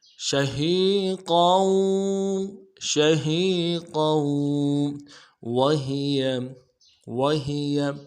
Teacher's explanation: کو واو کے ساتھ ملانا ہے، قوف کو موٹا کریں گے، قوف کی تنوین کو واو کے ساتھ ملائیں گے، واو کے اوپر تشدید زور دیں گے